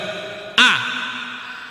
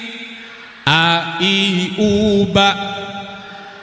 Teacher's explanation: Cara memberikan A yang betul, tempatnya di pangkal tenggorokan, mulut dibuka kira-kira 2 miring. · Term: hamzah